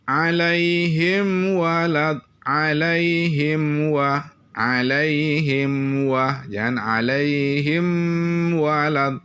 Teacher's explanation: ini hukumnya tidak boleh ditahan dia jelas tidak dengung ini namanya izhar syafawi mim sukun ketemu dengan Wah